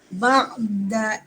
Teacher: ain bersifat isti'la di huruf tebal dan di tengah kerongkong